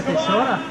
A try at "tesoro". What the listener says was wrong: Why are you saying tesora? It's tesoro. That's horrid.